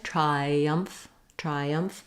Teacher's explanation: between the I diphthong and the schwa the uh sound in the second syllable you will have a little bit of a Glide